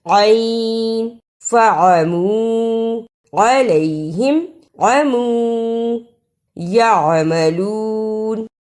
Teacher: اب پڑھیں فَعَمُوا عَلَيْهِمْ عَمُوا يَعْمَلُونَ۔ عین کی جگہ پر حمزہ کی آواز نہیں آنی چاہیے۔ ان تمام الفاظ کو فَعَمُوا عَلَيْهِمْ عَمُوا يَعْمَلُونَ ایسے نہیں پڑھنا، عین کو واضح کرنا ہے۔